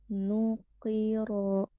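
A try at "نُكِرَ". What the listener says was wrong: Bukan ro. Ro, tipe ro. Ro ditebalkan.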